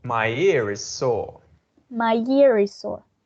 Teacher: because the following sound is a short I, he is going to pronounce the final R sound.